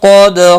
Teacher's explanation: دال ساکن پر قلقلہ ہوگا. قاف مستعلیہ ہے، پر پڑا جائے گا